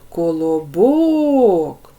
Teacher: нас Колобок ділимо на склади Колобок три склади вимовляємо це слово Колобок третій склад Ми вимовились з більшою силою голосу Отже третій склад наголошений